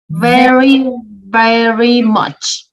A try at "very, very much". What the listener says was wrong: Perfect. Perfect.